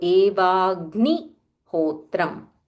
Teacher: So half ga followed by full ni. So Evagnihotram.